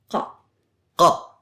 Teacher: This sounds a bit like a K, but said in the throat. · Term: qaf